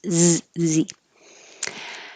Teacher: in the word cause is a voiced z